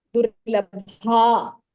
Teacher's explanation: So in the first one you have durlabha. The bha is mahapranah. And then there is a dvitva.